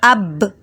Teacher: اب دیکھیں دونوں ہونٹ ہل رہے ہیں، اب تو یہ با جو ہے ہونٹوں سے ہی ادا ہوتا ہے، اس لیے دیکھیں ہونٹ پر ہی جا کے رک رہا ہے۔